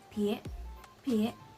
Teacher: It has the second tone, so we're gonna sound like we're asking a question.